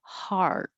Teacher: This is different than this is R. So your tongue should be lower, your jaw should be more open, heart. And I won't say the T, heart.